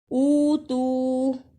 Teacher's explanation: یہ دونوں واو مدہ ہیں، اسے اتو کہہ کے آگے نہیں جانا